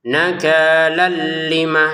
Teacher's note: Kita masukkan tanwinnya ke lam sehingga cara bacanya nakal ya. Dari nakal ini langsung saja ke lamnya tanpa ada dengungan.